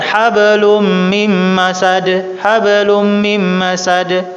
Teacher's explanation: nun sukun bertemu dengan mim. Akan jadi tasydid. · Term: idgham bi gunna